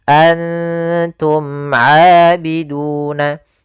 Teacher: Karena dia ikhfa itu menyamarkan huruf kepada huruf setelahnya, yaitu nunnya disamarkan kepada huruf ta. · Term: ikhfa aqrab